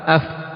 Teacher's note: perut bibir yang bagian bawah tayib bersama dengan ujung-ujung gigi seri yang atas yang dua itu keluar darinya huruf fa.